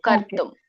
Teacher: ಅಲ್ಲಿ ಕರ್ತುಂ ಅಂದ್ರೆ ಅರ್ಕಾವಳಿ ಇದ್ದಾಗ ರ ಮುಂಚೆ ಹೇಳಿ ಆಮೇಲೆ ತ ಹೇಳ್ಬೇಕು